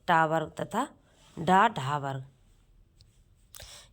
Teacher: तो यहां से देखिए इनके उच्चारण में इनके उच्चारण में जीभ तालु, कठोर तालु को छूती है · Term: मूर्धन वर्ण